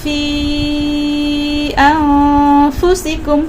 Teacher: نون ساکن کے بعد حرف فا ہے، لہٰذا نون ساکن میں آپ اخفا کریں 2 سیکنڈ کے لیے